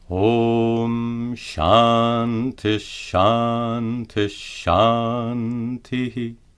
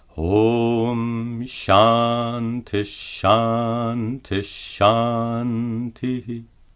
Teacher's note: Note that the visarga is pronounced as sha to match the following letter.